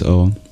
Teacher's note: Because A is one limit of the vowel space, U is another limit of the vowel space, and O is halfway between them.